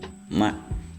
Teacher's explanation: Terus ada mim sapawi bibir ma. Jadi bibir atas sama bibir bawah ketemu